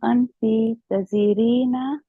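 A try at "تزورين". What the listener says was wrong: Tazurina. Tazurina. The vowel remains there. The ra changes to kasra. Tazurina.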